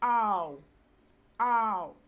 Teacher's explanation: with the sound and it gives you oh o and then the sound ah combines with the sound oh to give you ow